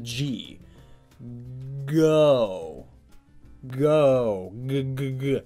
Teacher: but really slowly and focus on the G go go g see how your tongue balls up in the back of your mouth